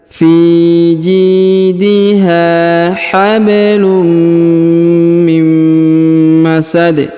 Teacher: huruf tanwin bertemu dengan huruf mim bertasdid, maka kemudian kita masukkan ke huruf mim, ya, dileburkan